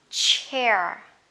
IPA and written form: tʃeə (chair)